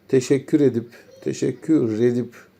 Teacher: R bir sonraki kelimeye ulanıyor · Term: ulama